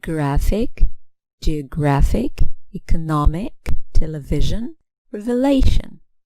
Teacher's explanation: stress here is on the penultimate syllable the one before the last one another rule stress on the anti-penultimate syllable anti-penultimate third from end